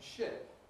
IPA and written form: ʃɪp (ship)